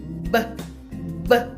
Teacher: B는 입술 두 개가 마주 나아요. 그리고 이런 거를 이제 [음악] 떨리는 유성음이라도 여기 성대가 떨려요. 울리는 거예요.